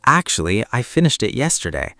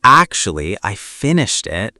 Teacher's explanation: If you say actually too strongly, it can sound annoyed. So keep it soft.